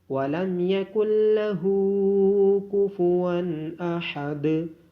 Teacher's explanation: ہا کو الٹی پیش ہونے کی وجہ سے لمبا کیا جائے گا اور دال پہ قلقلہ کیا جائے گا